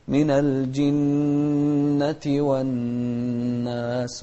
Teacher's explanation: النون المشددة هني إذا جاءتنا في القرآن بأكمله نغنها بمقدار حركتين، فنقول من الجنة والناس، وتكررت في كلمة الناس في هذه الصورة، فدائما نقول من الجنة والناس.